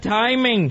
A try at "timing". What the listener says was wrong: Sure, it's timing, by the way. Timing. You got the accent on the wrong syllable.